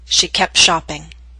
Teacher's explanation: the T she kept shopping but in Fast and formal speech we drop the T in that consonant group the consonant group is p t sh